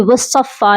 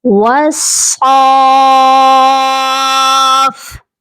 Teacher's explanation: صاد کے اوپر مد لازم ہے اور ہم نے اس کو 5 سے 6 الف تک لمبا کر کے پڑھنا ہے۔ یہ وصفا نہیں پڑھا جائے گا، صاد کی پہلے مد کو آپ نے کمپلیٹ کرنا ہے، وصاف۔